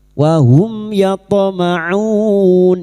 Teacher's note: Mim sukun bertemu ya idhar syafawi. Mim sukun dibaca jelas tanpa mendengung.